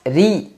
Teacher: karena rnya kasrah maka dibaca dengan tipis